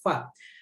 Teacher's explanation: 2 ujung gigi seri atas bertemu bibir bawah bagian dalam